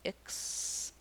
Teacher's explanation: in this word it's the voiceless k and s combination